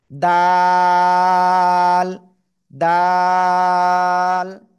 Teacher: জিহ্বার আগে উপরে দুই দাঁতের গোড়ায় লাগান লাগান লাগান, লাগিয়ে 1 2 3 আলিফটা নিয়ে উচ্চারণ করতে হবে